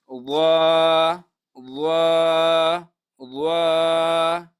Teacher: ضوا جو ہے زبان کی نوک اور اوپر کے جو دانت ہے اس کی سر. مثال یہ زبان کی نوک ہے اور یہ دانتوں کا جو یہ سر ہے اس سے ضوا ادا ہوتی ہے.